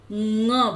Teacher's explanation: आ क ख ग घ बोल रहे हैं, उसी जगह जीभ को स्थिर करते हुए ङ बोलना है, तब ये आपका सही उच्चारण होगा।